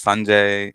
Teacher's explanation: the pronunciation and the emphasis is on the first syllable usually